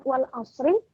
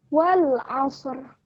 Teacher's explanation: lam jangan sampai terpantulkan kemudian masuk ke huruf Ain